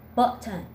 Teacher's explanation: we're going to talk about the glottal T sound as in the word button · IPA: / ʔ /